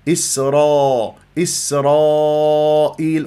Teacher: تفخم الالف تبعا للراء